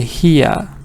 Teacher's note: says when you have e a and then you have r British speakers try to have the short e a little schwa and they remove the r in pronunciation